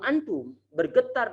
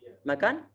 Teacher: Ini getaran-getaran ini yang muncul di hidung di saat kita memegangnya itu adalah suara gunnah. Muncul di huruf nun ataupun huruf mem.